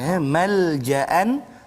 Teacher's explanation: Jadi kita baca dengan izhar halqi. Malja'an, jangan dengung pula malja'an aw. Jadi izharkan dia.